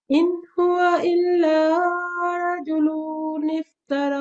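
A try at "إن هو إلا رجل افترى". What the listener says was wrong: ہاں جی، یہاں پہ لام لمبا نہیں کریں گے، حرکات مختصرہ کی طرح. رجل، ٹھیک ہے، رجل افترى، ٹھیک ہے. را کو بھی ہم تخفیف سے پڑھیں گے. ٹھیک ہے، ٹھیک، اس کو پور کر کے رجل.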